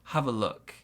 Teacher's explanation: we stress look. Small stress on have. Also, we've got some linking between the V and the sound.